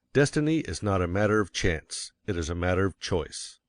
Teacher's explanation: it is one of the two big ideas in the statement another reason why Chance takes emphasis is that it is contrasted with choice in the next sentence